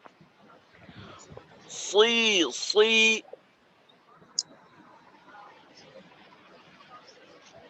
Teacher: জবরের ক্ষেত্রে, জেরের ক্ষেত্রেও গোল হয়। ঠোঁটের মাঝে যেন গোল ভাবটা না আসে, ঠোঁটটাকে খোলা রেখেই করবো আমরা। সুই সুই। সুই যেন সিনের মতো হয়ে না যায়।